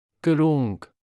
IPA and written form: kruŋk (կրունկ)